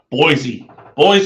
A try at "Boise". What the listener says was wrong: There's no Z in Boise. Boise. It's Boise.